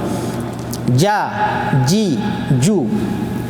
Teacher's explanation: देखें जबान का बीचों बीच ऊपर तालु से लगेगा। जा जी जू ये हरूफ थोड़ा दबा के, इसमें ना नरमीली है ना कुछ ये है, सीटी भी नहीं है।